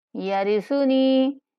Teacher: وَإِنِّي خِفْتُ الْمَوَالِيَ مِن وَرَائِي وَكَانَتِ امْرَأَتِي عَاقِرًا فَهَبْ لِي مِن لَّدُنكَ وَلِيًّا يَرِثُنِي وَيَرِثُ، يَرِثُنِي، ساکن نہایت نرمی کے ساتھ پڑھیں گے اور نون کو ایک الف کے برابر لمبا کریں گے